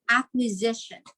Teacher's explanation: we do not pronounce it as s instead we pronounce it as z